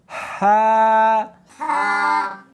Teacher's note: جیم اس کو حلق میں سے نکالنا ہے اور ساتھ میں ہوا بھی ہونی چاہیے. ہا ہاں نہیں پڑھنی بلکہ اس کو حلق میں سے نکالنا ہے، سینے میں سے نہیں نکالنا